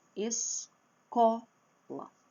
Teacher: É a penúltima sílaba que é a forte e não tem acento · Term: sílaba forte